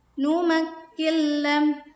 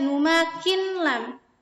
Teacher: Jadi idgham itu memasukkan nun sukun ini dimasukkan ke huruf lam.